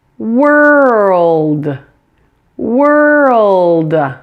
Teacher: your tongue tip is in the same place for both the L and the D they are right here behind your upper front teeth just make sure to smoothly blend these two sounds together pronounce